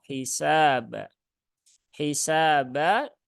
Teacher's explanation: tertukar menjadi ha Yuha hisaba hisaba tapi hi ya hisaba hisaba sinnya Ada Alif setelah fathah maka dia dibaca Dua harakat